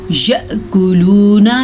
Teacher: ये बारीक काफ है, इसको मोटा नहीं पढ़ना।